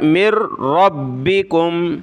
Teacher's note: نون کو ہم نے نہیں پڑھنا کیونکہ یہ نون ساکن ہے، نون کے اوپر جزم، نون ساکن کے بعد والے ورڈ پہ یہ تشدید آ جائے تو پھر وہاں نون ڈیلیٹ ہو جاتا ہے، ختم ہو جاتا ہے۔ اس میم کو ہم نے را کے ساتھ ملانا ہے اور اس را کو با کے ساتھ ملانا ہے۔